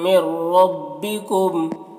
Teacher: من ربکم یہاں پر نون ساکن کے بعد را ہے، حروف جر ملون میں سے تو ادغام تام ہوگا، نون کو را سے ملا کر بغیر غنہ کے پڑھیں گے اور را کو پر پڑھیں گے